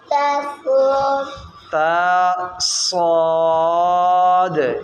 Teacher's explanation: صاد سٹی والا بھی ہے اور موٹا حرف بھی ہے